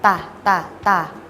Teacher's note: ใช้ปลายลิ้นแตะบริเวณฐานฟันบนแล้วเปล่งเสียงตะตะตะ